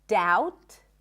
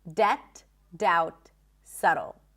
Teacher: we also don't have a B sound in the words debt, even though there is a B